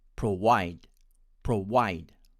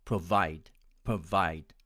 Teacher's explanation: my friends from india tend to pronounce it as provide provide with a w sound